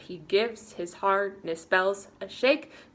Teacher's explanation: so every other syllable is stressed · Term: stressed syllables